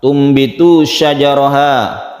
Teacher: Antum bitu nun mati bertemu dengan ba iklab. Artinya tadi suara nun mati dibalik menjadi mim mati. Makanya di sini ada mim yang kecil.